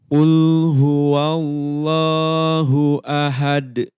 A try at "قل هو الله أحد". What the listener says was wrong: Diperhalus lagi ya haknya. Ahad, ahad, kurang pas, kurang tinggi, kurang atas makhrajnya.